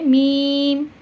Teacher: দুই ঠোঁটের মাধ্যমে এই মিমটা উচ্চারণ হবে